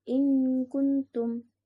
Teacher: Cara pengucapannya samar antara idhar dan gunnah. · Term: hukum ikhfa